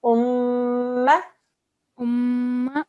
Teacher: It's a meme mushaddad, so we're going to do a 2-second nasal sound.